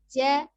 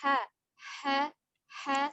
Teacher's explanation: Jadi suaranya tidak ditahan seperti huruf jim, ja, tapi ha, lepas ya.